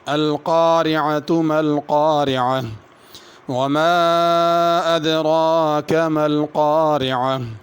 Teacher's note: ما پہ مد ہے، اس کو کھینچنا ہے۔ · دوسرا، اگر القارعہ پہ رکنا ہو تو ہا پڑھنی ہے القارعہ، اگر ملا کر پڑھنا ہو تو پھر تا پڑھی جائے گی۔